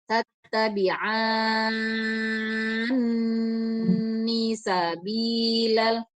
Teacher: masuk ke nun itu didengungkan dulu baru kasihkan harokat kasroh